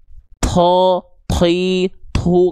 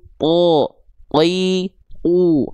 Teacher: Dia tidak keluar nafas sedikit pun, alias tertahan nafasnya. Maka ketika kita lafalkan, tidak kita lafalkan to, ti, tu, enggak, tapi to, ti, u, enggak keluar nafas.